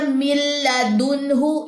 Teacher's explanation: ये नून पढ़ा ही नहीं जाना। मिल मीम की ज़ेर को लाम से मिलाए। · یہ نون پڑھا ہی نہیں جانا، مل، میم کی زیر کو لام سے ملائیں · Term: इगाम मुतकार, ادغام متقاربین